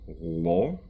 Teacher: Moving backwards again, the L in the preceding word, L. Slavic L's in general tend to involve a little bit more of the tongue. So, not just the tip, but more of the middle of the tongue coming up.